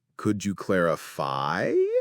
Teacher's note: When you're asking a question, use rising intonation, so your voice actually goes up at the end of the sentence.